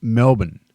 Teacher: We basically swallow the middle bit, like 2 syllables.